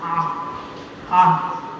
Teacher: you see the hard A, which is that guttural sound.